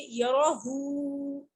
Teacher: الٹی پیش کو 1 فنگر اسٹریچ کرتے ہیں